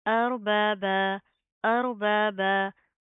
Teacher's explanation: वक्फ की सूरत में क्या, एक ज़बर गिर जाएगी, एक ज़बर को हम अलिफ के साथ मिलाकर पढ़ेंगे